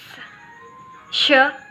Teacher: the tongue tip approaches the alveolar ridge but does not quite touch it. There is still enough of an opening for airflow to continue, but the opening is narrow enough that this causes the escaping air to become turbulent. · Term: fricatives